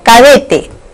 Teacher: Clase de palabra, aguda. En la palabra cadete, la sílaba tónica recae sobre la sílaba de.